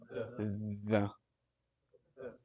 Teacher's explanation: You're sticking your tongue through your teeth. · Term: Thal